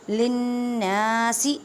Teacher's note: نون مشدد گنہ کریں اور نون کو ایک الف کی مقدار میں کھینچ پڑھیں